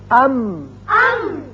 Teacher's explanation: ہونٹوں کا خشکی کا حصہ ملا تو میم ادا ہوا